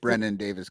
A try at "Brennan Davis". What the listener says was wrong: Well, it's Brennan. It's Brennan Davis, not with it without a D. Brennan. He probably was